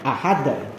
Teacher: qalqalah kubro ini di akhir kata ditekan, jadi ahad dipantulkan